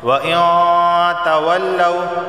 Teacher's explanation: کیونکہ تا حروف اخفا کے 15 حرفوں میں سے ایک حرف ہے تو غنہ ہوگا، یعنی ناک سے 1 الف کے برابر آواز آئے گی۔ · اب دیکھیں نون ساکن کے بعد تا آیا ہے تو یہاں اخفا کا غنہ ہوگا